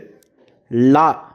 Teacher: நாவின் இரு பக்கங்கள் தடித்து மேல் அன்னத்தின் நடுப்பகுதியை தொடுவதால் லகரம் தோன்றும் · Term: பொது லகரம்